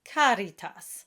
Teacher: and over and the movement is quite slow as well so what we want is an Italian a it's the middle ground a between the ah and the a sound